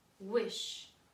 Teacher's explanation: ends with a sh, an unvoiced sound. So wished is our word, but let's do the root word, which is wish.